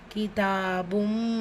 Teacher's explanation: தன்வீன் இருக்குது. தன்வீனை தொடர்ந்து அடுத்த வார்த்தையுடைய தொடக்கத்தில் மீம் இருக்குது. ஸோ இதுதான் பில் குன்னா இணைச்சி குன்னா செஞ்சு ஓதணும்.